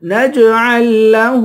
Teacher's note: نون کو جیم سے ملا کر جیم پر قلقلہ کریں گے، جیم حروف قلقلہ میں سے ہے